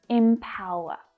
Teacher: Notice that the first vowel sound is actually a short I sound. Even though it's spelled with an E, it's not E, it's I. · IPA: /ɪmˈpaʊər/